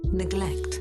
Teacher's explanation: Yes, it's E. It's not A nor the schwa sound.